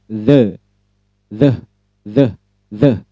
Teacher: Jadi tempatkan ujung lidah, nah gigit sedikit ya, enaknya begini saja, gigit sedikit ujung lidah dengan gigi atas dan bawah, gigit sedikit gigit sedikit ujung lidah dengan gigi atas dan bawah, kemudian ucapkan the, tebal ya, the. Gigit lidahnya sedikit ujungnya, ujung lidah digigit oleh gigi atas dan bawah, lalu ucapkan the, tebal, the, seperti dalam kata the juga.